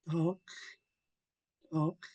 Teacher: Now, I know that's a hard sound to make, but if we follow the rules to pronun pronunciating the HL blend, the tip of our tongue will automatically dart up behind our upper front teeth